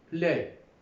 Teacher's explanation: The tip of the tongue is raised, touching the alveolar ridge to produce l